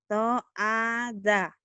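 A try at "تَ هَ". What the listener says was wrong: Ha ha. To hada ya, bukan to ada.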